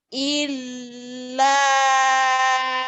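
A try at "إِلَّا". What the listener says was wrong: jangan ditahan ya. Ilnya jangan ditahan double doang, yang ditahan la-nya. Illa, jangan ilnya jangan ditahan karena bukan gunnah. Illa yang ditahan la-nya.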